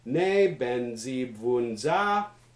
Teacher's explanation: we should get high low low low high